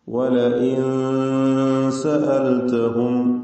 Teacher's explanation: മണിക്കലിൽ തർക്കീഖാണ്, ഇഖ്ഫ മുറക്കഖ് അല്ലെങ്കിൽ ഉന്ന മുറക്കഖ്. അങ്ങനെയാണ് തർക്കീഖോട് കൂടിയുള്ള ഇഖ്ഫ ആണ് വേണ്ടത്.